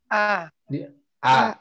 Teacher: huruf hamzah ada di tenggorokan bawah